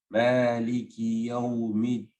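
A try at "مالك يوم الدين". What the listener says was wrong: That's very good. I think that was your best one,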